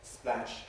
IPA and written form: splæʃ (splash)